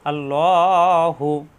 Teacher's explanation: আল্লাহ শব্দের ডানে জবর ও পেশ আসলে আল্লাহ শব্দ লা না হয় ল হয়, অর্থাৎ মোটা হয়।